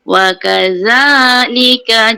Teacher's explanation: za nipis, keluar lidah antara gigi atas dengan gigi bawah